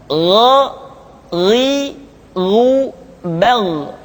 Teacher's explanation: Diucapkan seperti kita mengucapkan huruf Kha, yaitu diucapkan dari pangkal tenggorokan kita. Yang membedakannya adalah Kha mengalir nafas dan Gha tidak mengalir nafas. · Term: huruf Gha